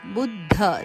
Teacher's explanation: ಬುದ್ಧ ದ ಕೆ ಮಹಾಪ್ರಾಣ ಧದ ಒತ್ತು